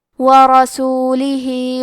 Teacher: آخری میں ہا کے نیچے کھڑی زیر ہے، یہاں حکم ہے مد صلہ صغرا، تو ہم اپنی آواز 2 مد کے برابر لمبی کریں گے